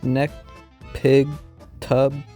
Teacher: you place your tongue as if you're going to actually make the sound but you don't release anything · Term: no audible release